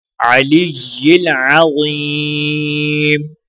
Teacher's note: ضا کو یا کے ساتھ ملاتے ہوئے ایک الف کے برابر کھینچ کر پڑھیں گے